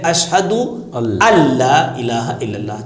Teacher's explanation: اسی طرح سے یعنی نون کے بعد نون اشہد ان، نون ساکن، اس کے بعد لا الہ، لام آ گیا، یرملون میں سے لام آ گیا، تو نون کو بالکل بھی نہیں پڑھیں گے، پڑھنا تو ہے نہیں، نون کی آواز بھی غنہ بھی نہیں آئے گا